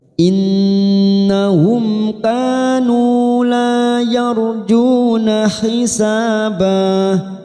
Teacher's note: Innahum kanu la yarjuna hisabah, nun yang bertasdid gunnah musaddadah kita tekan 3 ketuk. Innahum mim sukun bertemu kaf idhar safawi kita baca jelas